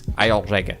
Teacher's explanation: Like the ER, the R sound becomes an O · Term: Saxon accent